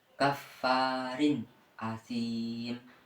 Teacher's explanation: tanwin dibaca jelas seperti suara nun mati kemudian dilanjutkan huruf setelahnya yaitu Hamzah Hamzah dibaca jelas sesuai makhrajnya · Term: Idhar